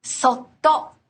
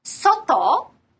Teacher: it takes slightly longer to say sotto with the double consonant than soto with the single consonant. That's because the prolonged consonant expressed with the little tsu actually makes up a single sound unit of its own.